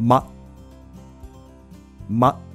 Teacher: ではST▁まで含めて発音してみましょう。▁must▁must。▁ではそのまま▁ST▁まで発音するつもりでまだけ発音してみましょう。まま、まではなくまと 母音が短くちょっと奥に入ってくぐもったような感じになりませんか